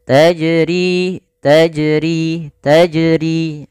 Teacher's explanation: Nah, kemudian pada lafal ri ada mad thabi'i ditandai dengan kasrah bertemu dengan huruf ya. Maka untuk panjang ri sendiri dua harakat